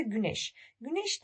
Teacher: güneş derken arkadaşlar ince ünlüyle başladı, ince ünlüyle bitti